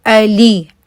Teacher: سو اے لی، اے لے نہیں پڑھنا، اے لی پڑھنا ہے، ای آواز جو ہے وہ ادا کرنی ہے